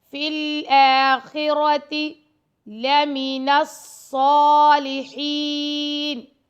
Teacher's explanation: فِي الْآخِرَةِ لَمِنَ الصَّالِحِينَ، لام اور میم کو لمبا نہیں کرنا، نون کو ہم نے سواد سے ملا دینا ہے